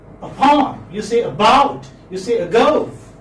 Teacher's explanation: So we are in fact giving stress on the second syllable.